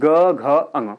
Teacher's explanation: जब आप जी ग बोलते हैं तो इस कंडीशन में आपके स्वर यंत्र में वाइब्रेशन उत्पन्न होता है यानी की गले में हल्का सा जोर ए जाएगा ठीक है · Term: सघोष